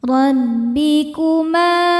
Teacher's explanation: Ma hukumnya mad thabi'i dzahiri, sebab ada alif didahului harakat fathah. Cara bacanya panjang dua harakat.